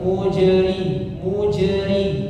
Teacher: suaranya jangan sampai terputus, jangan muj, atau bahkan terlalu kecil, muj, tapi dia mengalir suaranya. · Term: qalqalah